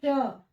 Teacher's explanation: तालव्य श जैसे मैंने कहा श तो जो मेरा जीभ है जीभ ऊपर जो ताल है उसके पास तो जाता है लेकिन उसको टच नहीं करता है उसमें थोड़ी सी जो जगह बची रह जाती है वहीं से हवा क्या करता है वो घर्षण होके बाहर निकल जाता है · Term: संघर्षी व्यंजन, तालव्य सा